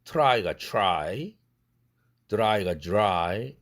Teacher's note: R 사운드가 왔을 때도 주로 추나 주로 바뀌어요